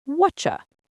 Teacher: The T in what and the Y in you combine to make a ch sound. What you becomes whatcha.